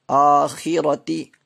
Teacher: آخرتی کھڑا زبر ہے تو الف مدہ کے برابر کھینچیں گے اور را کو پر پڑھیں گے آخرتی. اکبر، اکبر.